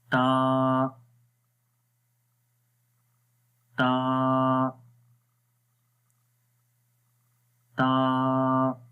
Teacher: ज़ुबान की नोक ऊपर वाली दांतों के जो सामने वाले दांत हैं उनकी जड़ों पे लगेगी तो ये हर्फ अदा होगा। और अब जब आपकी ज़ुबान की नोक इधर लग रही है, इसका मतलब है कि आप इसकी जो प्रोनाउंसिएशन है वो अच्छे से कर रहे हैं। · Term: ता का मखरज